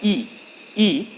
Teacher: जब आप कहते हैं ई ई, तो आप देखते हैं कि हमारा जीभ का जो पिछला हिस्सा है वो तालु में स्पर्श करता है। इसका मतलब जो छोटी ई और बड़ी ई है वो आपका तालव्य स्वर है।